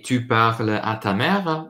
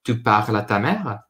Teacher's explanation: Now, very informally, you just say, tu parles à ta mère with a rising intonation